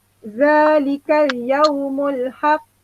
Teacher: Bunyi lantunan qalqalah tu besar. Okey, sebab dia di hujung ayat kita nak berhenti. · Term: qalqalah kubra